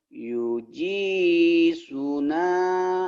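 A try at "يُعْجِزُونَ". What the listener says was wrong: Zu-nya panjang kan ada matobi ini, Pak. Ini matobi namanya kasro dengan ya mati. Yuji.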